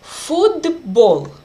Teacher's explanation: B is voiced consonant, and it affects the previous letter t, and t also became voiced. Football. You can see d sound, football.